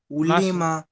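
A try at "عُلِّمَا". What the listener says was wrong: তো অক্ষরের যে আলিফ থেকে ইয়া পর্যন্ত টান দিয়ে পড়েছেন, সেই টানটি হয়নি।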